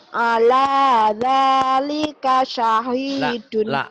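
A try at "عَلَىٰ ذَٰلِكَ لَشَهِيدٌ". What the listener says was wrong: La-nya ketinggalan. La syahidun. Ala dhalika la syahidun.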